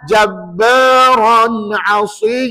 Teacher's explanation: pastikan Ron tu rnya tebal jangan baca jabaran asah kalau Ran jadi nipis